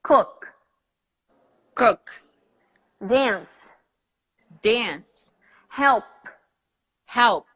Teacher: these sounds, the K, the S, and the P, they don't vibrate here